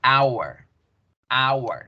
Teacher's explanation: Pero ni en español ni en inglés la H suena. Entonces, cuando yo digo la palabra hora en inglés, yo digo hour, hour.